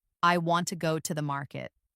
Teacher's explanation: the stressed words are want, go, and market. The smaller words like I, to, and the are less stressed. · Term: sentence stress